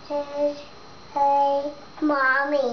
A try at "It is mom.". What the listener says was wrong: Okay, it doesn't say a, so let's just read the words again. It. Is mom. It is mom.